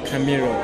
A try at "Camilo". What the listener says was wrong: No, with L. Camilo.